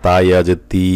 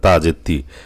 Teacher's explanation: যদি তা ইয়া যে তি লম্বা টান না দেন তাহলে কিন্তু ইয়া অক্ষরটা বাদ পড়ে যাবে, তা যে তি হয়ে যাবে